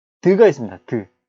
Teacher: 혀가 윗 잇몸 쪽을 갖다가 딱 막아버려요. 폐쇄시켜버리죠. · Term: 잇몸 소리